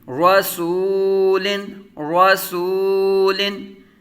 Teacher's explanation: را پر زبر را پر متحرک، سین متحرک واو ساکن سے پہلے پیش واو مدہ، ایک الف دو حرکات کے برابر کھینچ کر، لام تنوین منون، رسولن، رسولن۔